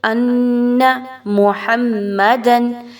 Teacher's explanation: نون مشدد کا غنہ انا پر بھرپور طریقے سے کیجئے